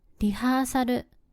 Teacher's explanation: 最後のLはうをつけてると発音します 。ちなみに語尾のLはると発音されることが多いです。例えば、ゴール、チャンネルなどです。この動画の冒頭で紹介したgirlもがに代替されGと合わせてが、そして最後のLがるとなり全体でガールと発音されていますね。5つ目はコーヒー。ヒントは飲み物です。答えはcoffee。あの音は日本